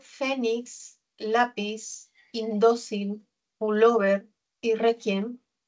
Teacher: Todas ellas tienen algo en común que prosódicamente, oralmente, el acento está en la penúltima sílaba. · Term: palabras graves